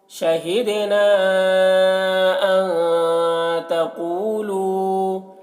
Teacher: شہدنا ان تقولو، شہدنا دال میں قلقلہ ہو رہا ہے، نون میں جو مد ہے یہ مد منفصل ہے، پیچھے پڑھ چکے ہیں، نون میں اخفا ہوگا. قو اور لو دونوں میں واو مدہ ہے، ایک الف کے برابر کھینچیں گے